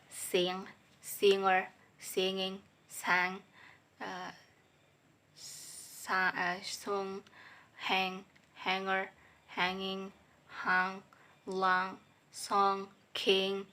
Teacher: Voice velar nasal sound